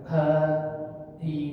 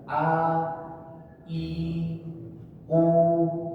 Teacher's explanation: Jadi hamzah ini ketika diucapkan itu dia tidak mengeluarkan nafas. Contohnya ha, i, dia tidak seperti keluar nafas, dia tidak keluar nafas, dia tidak ha, i, tapi dia pure benar-benar ditekan.